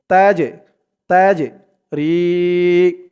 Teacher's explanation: এই জিমটা কল কলার হরফ ধাক্কা দিয়ে পড়তে হবে